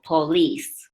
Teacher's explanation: police, the stress is on the second syllable